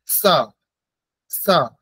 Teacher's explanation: ঠিক, উচ্চারণ হচ্ছে দন্ত ছয়ের উচ্চারণ দাঁতে হবে। জিহ্বার অগ্রভাগ দাঁতকে এসে দাঁতগুলিকে স্পর্শ করবে।